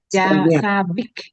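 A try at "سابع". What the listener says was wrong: Ain. Bil ain. Sabi'.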